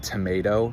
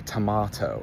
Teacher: So you know how in English, Americans will say the word tomato, but the British will say tomato. Depending on your accent, you're changing the sound of the A vowel. In this example, Americans say A, but the British say ah.